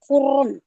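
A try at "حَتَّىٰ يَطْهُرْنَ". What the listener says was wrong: Nggak boleh terlalu huren ya. Hatta yatahurn. Hatta yatahurn.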